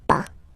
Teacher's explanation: Okay, we write it PAS, okay, but as usual, final S is not pronounced, so it's pas